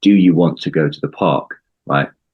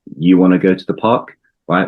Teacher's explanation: We've used yeah contraction want to becomes wanna.